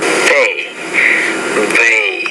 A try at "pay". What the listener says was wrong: Again, not bay, but pay, pay, bay. What if you take this word here, you say the P, so you say pay, pay. You're saying it more like bay, bay, but it's pay, pay.